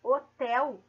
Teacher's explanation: tenho apenas quatro fonemas porque eu não pronuncio a letra h ela não eu não escuto a letra h ela não é